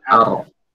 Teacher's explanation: yang tebal itu hanya ro. Sementara alifnya itu tipis.